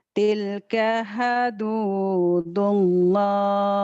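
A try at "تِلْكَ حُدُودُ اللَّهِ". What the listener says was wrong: Bukan ha tapi hu, hudu.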